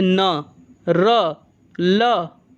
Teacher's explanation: जिन व्यंजनों के उच्चारण में जिह्वा ऊपरी मसूड़े यानी वत्स को स्पर्श करती है तो उसे वत्सर्य व्यंजन कहा जाता है।